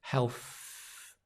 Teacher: The tongue just touches in between the teeth. Health. Very, very, very light, very soft. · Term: th sound